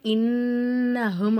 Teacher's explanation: இந்த இடத்துல ஓதணும் சரிங்களாமா இப்போ நம்ம இங்க ஓதணுமா இன்னஹும் அப்படிங்கிற இடத்துல நூனுக்கு மேல சத்து இருக்கறதுனால நல்லா அழுத்தி நம்ம சொல்லணும்